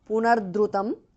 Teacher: Punaha visarga changes to repha